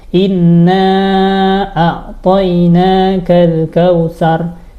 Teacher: Contoh kesalahan gunah kurang ditahan, kurang lama. Misalnya nun tasdid kan harusnya dengung kita tahan tapi enggak ditahan.